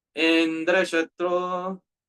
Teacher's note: instead of having the final syllable as Udatta, high pitch, Twashta incorrectly pronounced the initial syllable with high pitch. Indra Shatro, dear devotees, in this way, the meaning changed and then it became Bahuvrihi Samas.